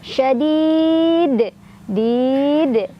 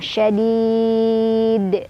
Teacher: Ada qalqalah kubra karena ada huruf qalqalah yaitu dal yang sukunnya itu bukan sukun asli melainkan sukunnya karena kita berhenti membaca gitu. Jadi dipantulkannya besar, lebih berkumandang.